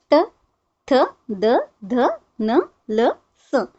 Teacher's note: उसी तरीके से त थ द ध न ल स इन सबके लिए हमारे दांतों का इस्तेमाल हो रहा है। इसलिए इसे नाम दिया गया है दंत्य।